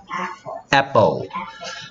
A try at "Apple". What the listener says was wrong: 자, 지금 성모가 이거를 모든 P를 F처럼 발음하고 있어. 자, P가 내는 소리는 P고요. 입술이 부셔서 떼야 돼. 그래서 Apple. 그 다음에 F가 내는 소리는 선생님이 우리말에 없어서 발로를 해요. 그리고 윗니가 아래 입술을 스쳐야 돼. 이렇게 스치면서. 하고는 달라. 그래서 F이 아니고 Apple. Apple.